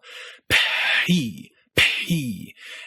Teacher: you'd be making a P sound with more aspiration than the one in English. And if you wanted to sound especially French or Italian, you could start the vowel immediately, as soon as your lips pop open.